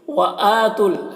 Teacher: وآتوا حمزہ میں کھڑا زبر ہے، اسے کھینچ کر پڑھیں گے. واو اور یہ دونوں الف کو نہیں پڑھا جائے گا، اس میں کوئی حرکت نہیں ہے، اس وجہ سے نہیں پڑھا جائے گا.